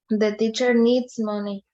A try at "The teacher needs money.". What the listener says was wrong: Needs. Que se escuche la S. Needs. Eso, que se escuche la S.